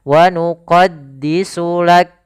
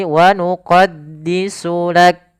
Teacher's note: Pada huruf kaf ketika dia sukun ada namanya sifat hamas, yaitu sifat mengalirnya nafas, sehingga ada aliran nafasnya. Wa nuqaddisu lak, ya tidak lak ya, tapi wa nuqaddisu lak, seperti itu.